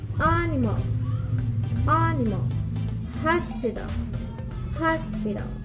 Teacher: Primary stress is on the first syllable and all other syllables are unstressed.